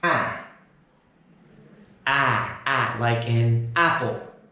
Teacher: We've also pushed this ah vowel sound to the front of the mouth to make ah.